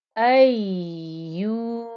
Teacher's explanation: So here, the hamza with the fatha joining into the ya because of the shadda. So you've got to keep the noise of the ya flowing a little first because you've got a double ya